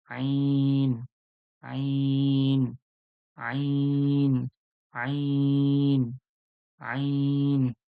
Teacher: দেখুন আইন আইন আইন আইন আইনটা কোথা থেকে পুরো কণ্ঠনীর যে গলার মধ্যে যে কণ্ঠনীটা রয়েছে পুরো মাঝখান থেকে আওয়াজটা বের হবে